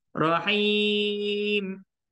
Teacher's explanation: Tertahan suara maknanya dia tak alirkan suara tu kat hidung, maka tak zahir sifat gunnah.